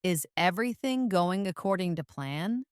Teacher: Notice how the intonation rises at the end, signaling a question.